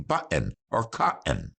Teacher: we capture air behind the bands of cartilage that are the vocal cords cutting off the airflow momentarily and letting it out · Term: glottal stop